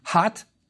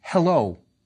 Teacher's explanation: The difference between the two H's is that the reed hut is more emphatic as in hot, where you expel your breath forcefully. The flax H is not so emphatic. It's more like the H in hello.